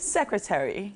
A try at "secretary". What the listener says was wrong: Secretary. The last T didn't come. The T, Secretary. Secretary.